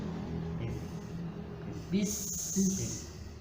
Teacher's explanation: Sin Shad sama Zai itu bersiul ada suara tambahan